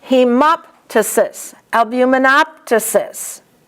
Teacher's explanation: And the PTYSIS, you pronounce both the P and the T.